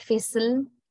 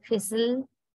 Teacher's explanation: So in the latter instance, the consonant is syllabic and serves the function of a vowel sound